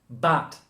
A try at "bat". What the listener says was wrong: You're sounding a bit like but. Bat.